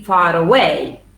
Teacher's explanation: So in that case, you need to put the ra, and you need to say like this. Yes, far away. Yes, because there is a linking ra, because the following word begins with a vowel.